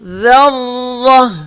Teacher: ذال را زبر ذر، را زبر را، تشدید ہے، سخت ہوگا را اور موٹا پڑھا جائے گا کیونکہ را کے اوپر زبر ہے۔ ذر، تا دو زیر تین، ذرۃ، ذرۃ، وقف، ذرہ، ذرہ، را سخت ہوگا اور تا پہ جب وقف کریں گے تو ہا پڑھیں گے۔